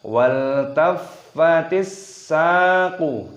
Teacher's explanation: sinnya berharokat tasdid, maka kita idghamkan, kita masukkan · Saqu ada tanda alifnya, perhatikan, dibaca panjang, mentabi'i, panjangkan 2 ketukan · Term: alif lam idgham samsiyah